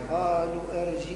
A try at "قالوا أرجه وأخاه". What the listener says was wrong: لا كيف أقول قالوا أرجي وين المد قالوا كما مديت القاف مد اللام قالوا أرجيه لا لا أرجه وأخاه هكذا تقرأ. قالوا أرجه وأخاه. أرجه وأخاه.